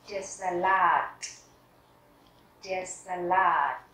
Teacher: trọng âm rơi vào chữ A cuối